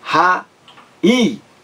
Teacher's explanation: Esse I aí está sozinho em uma sílaba, e é o mais forte. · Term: hiato